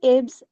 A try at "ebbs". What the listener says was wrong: Ebbs, it's not ib, ebbs. ठीक है, इसको हम ई नहीं बोलते, ए बोलते हैं।